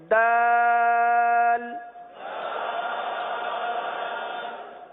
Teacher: زبان کی نوک اور اوپر کے دانتوں کی جڑ سے یہ حرف ادا ہوتا ہے